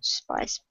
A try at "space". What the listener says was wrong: that's a pronounced space, not spice. Well, spice is stuff you put on food, right? Salt, pepper, stuff like that. Those are spices.